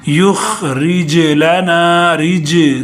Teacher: جیم کو ہلانا ہے، جیم ساکن ہے